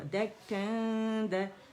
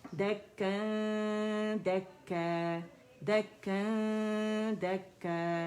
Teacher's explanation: और right way हमने दाल के मखरज पे जाना है, इख्फा रिटेन करते हुए 2 काउंट का कामिला ग्रेड का हम इख्फा करेंगे, थोड़ी आवाज़ मुंह से ज़्यादा नाक से आएगी, फिर जब गुन्ना कंप्लीट हो जाएगा तो फिर हमने दाल अदा करना है